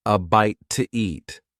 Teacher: In fast speech, when one word ends in a vowel sound, and the next one starts with a vowel sound, we often add an extra sound to make it easier to say. In this case, the extra sound is W.